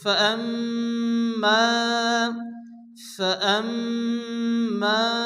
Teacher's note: ইন্না সা'য়াকুম লাশাত্তা, ইন্না সা'য়াকুম লাশাত্তা। ফাআম্মা, মিমের উপরে তাসদীদ, মিম গুন্না ওয়াজিব